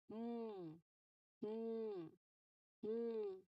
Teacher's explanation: Here, your lips are closed, and the air only through your nose. It flows out through your nose.